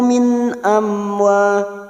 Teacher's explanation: Min amwalihim, mim sukun bertemu waw idhar safawi dibaca jelas tanpa mendengung